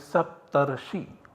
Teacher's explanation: So you get one option where you have sapta and rishi, both vowels remaining in their own form, and as a second option there is guna sandhi that takes place and substitutes both a and ru by ar. So we have sapt, ar and shi, that is saptarshi.